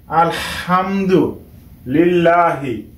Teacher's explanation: হামজা লাম জবর আল, হা মিম জের হাম, আল হাম, দাল পেশ দু, আলহামদু, লাম লাম জের লিল, লাম খারা জবর লা, হাজের হি, আলহামদুলিল্লাহি। এখানে হা উচ্চারণ করতে হবে গলার মাঝখান থেকে